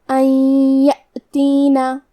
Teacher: تو ہم نون ساکن کو یا میں ملا کے غنہ اور تشدید کے ساتھ یہ حکم کو ادا کریں گے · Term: ادغام بغنہ